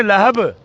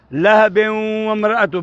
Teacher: با کی آواز کو باؤنس کرائیں کیونکہ با ساکن ہو رہا ہے. پہلے ہم پڑھ رہے تھے لہب، اب ہم پڑھیں گے لہب. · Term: قلقلہ